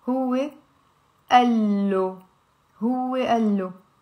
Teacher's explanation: We will drop it, one of the alifs, and we will say, you see there is a al here, al plus lo. It becomes like a double L and it's huwe allo.